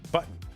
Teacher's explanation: Like I don't actually say the T. I just kind of pivot with it, right? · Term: glottal stop